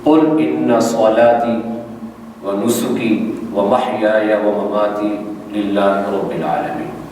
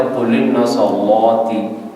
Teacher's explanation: ایک تو حمزہ قطعی کا حذف ہے جو ان کے شروع میں آ رہا ہے، لام پر جو جزم ہے اس پر حرکت آ رہی ہے حمزہ والی، تو تلفظ ہو رہا ہے قل ان صلاتي۔